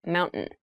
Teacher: when you pronounce this word in fast speech, it sounds like mountain. The t sound is reduced.